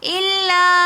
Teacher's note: الا یہاں پر مد منفصل ہو رہی ہے اس لیے ہم اس کو 3 الف کی مقدار کھینچ کر پڑھیں گے